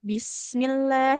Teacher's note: Sinnya mengalir dengan sempurna suara dan nafas.